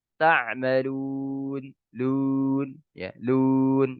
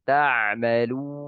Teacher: Jadi intinya mengucapkan waw mat itu sempurna, memajukan kedua bibirnya. Kemudian ya mencampurnya dengan sedikit suara huruf ya, ya.